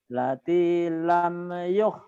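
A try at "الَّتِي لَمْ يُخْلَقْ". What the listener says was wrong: Allati bukan lati, allati. Allati lam yukhlaq misluha fil bilad. Jadi panjang badal disukun.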